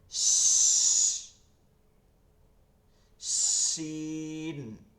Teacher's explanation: শিনের সময় কি লাগতে হবে, শুধু পেটটা, জিহ্বার পেটটা তালুতে, আর কোথাও কিছু লাগবে না।